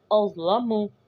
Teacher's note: لام اور میم کو کھینچیں گے نہیں کیونکہ ان کے اوپر سادی حرکات ہیں